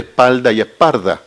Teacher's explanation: en el español de Chile uno puede escuchar la variación entre espalda y esparda, sueldo, suerdo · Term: neutralizaciones